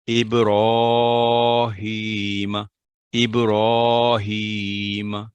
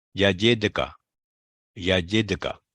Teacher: سغرا یا ہلکا کلکلا الفاظ کے درمیان میں اصلی سکون کے ساتھ